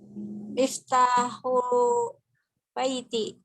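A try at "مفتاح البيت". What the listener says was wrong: Pakai alif lamnya dibacanya miftahul. Miftahul baiti karena alif lamnya qamariyah jadi terbaca alif lamnya. Kalau yang samsiah kayak at-talibu miftahut.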